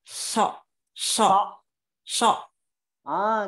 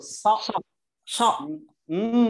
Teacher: lidahnya ditaruh di gigi seri bawah. Suaranya nebel.